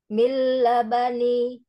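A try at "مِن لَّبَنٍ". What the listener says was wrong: Lamnya, harokat fathahnya sempurnakan dengan cara membuka rongga mulut. Milabanin. Bukan la, tapi la. Dibuka la. Yuk, lamnya sukun.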